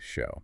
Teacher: They lock the jaw and use a pure raw open o. >> It's not show tapering off. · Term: the o shift